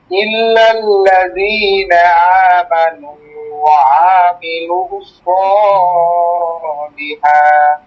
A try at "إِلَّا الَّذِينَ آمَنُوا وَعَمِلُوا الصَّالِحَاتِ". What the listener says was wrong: ছয় তো টান হবে না, একালিক টান, এটা ধাক্কা দিলি।